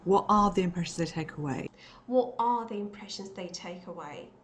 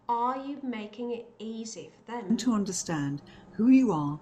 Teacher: In all these cases, she did stress the R and she did pronounce it in a strong, full form as R